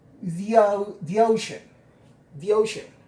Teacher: para que haya una transición entre the y una vocal necesitamos una Y muy pequeñita. Y se va a pronunciar ya.